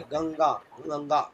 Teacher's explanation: नाक से जो ध्वनि निकलता है उच्चारण करने पर उसको कहते हैं अनुस्वार